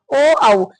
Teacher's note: कंठ और ओष से बोले जाने वाले हैं ओ और आऊ